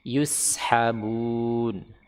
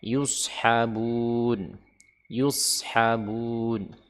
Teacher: Huruf sin istifal sedangkan shad isti'la. Huruf sin infitah huruf shad itbaq. Sehingga huruf shad itu tebal ya.